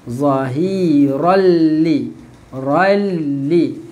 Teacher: Tanwin bertemu lam, masukkan tanwin ni kat dalam lam.